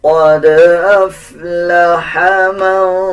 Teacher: دال کے اوپر جزم ہے، دال کے اوپر قلقلہ کیا جائے گا